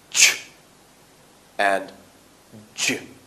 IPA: tʃ dʒ